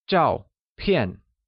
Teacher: both zhao and pian are pronounced with a falling tone